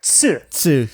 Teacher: they don't have a straight up tu sound in Japanese rather they they have TSU